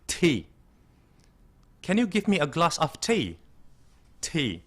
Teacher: Jadi, para akademia yang mungkin menonton siaran ini pada hari ini, kalau mau pesan teh dalam bahasa Inggris, tidak lagi ngomong T, tapi ada sedikit tekanan udara dalam mengucapkan T-nya